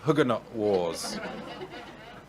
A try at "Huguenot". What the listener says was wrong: I mean, you know you're saying that wrongly. Huguenot, don't say the T. Like, Huguenot? Huguenot.